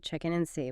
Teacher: the and sound at the end of and often just falls away before a consonant sound